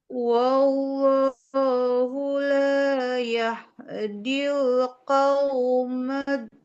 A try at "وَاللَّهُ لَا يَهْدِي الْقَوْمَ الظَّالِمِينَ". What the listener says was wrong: Tidak do, tapi zo. lidahnya nempel ke ujung gigi seri yang atas. Zo. Tidak do. Zo. Nah, zo. Oh, untuk koreksinya tadi di sini huruf qalqalah ibu ya. Sama ini huruf yang tidak bertasydid jangan ditahan.